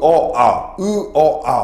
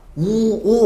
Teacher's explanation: 마찬가지 아도 보시면 아 하면서 입술이 좀 평평하지만 오 같은 경우에 입술의 모양이 동그랗죠. 그래서 이것을 우리가 원순모음이다 라고 얘기합니다.